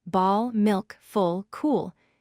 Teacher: Notice how the sound is darker and deeper than the light L. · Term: dark L